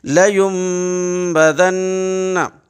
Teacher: اس لیے کہ نون ساکن کے بعد یہاں فوراً با آ رہا ہے، نون ساکن کے بعد با آ رہا ہے، لہذا اس ین کی وجہ یم ہوگا، یہ نون کی آواز حذف ہو جائے گی، میم کی آواز آئے گی